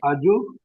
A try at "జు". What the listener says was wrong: జు, ఆకి దీర్ఘం వద్దు.